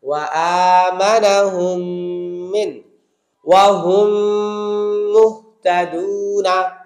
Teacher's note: মিম সাকিনের পরে মিম, তাহলে প্রথম মিম সাইলেন্ট, সেকেন্ড মিম ওয়াজিব গুণনার মতো গুণনা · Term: মিম সাকিনের ইদগাম